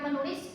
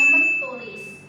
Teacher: fonem T berubah jadi bunyi dental nasal N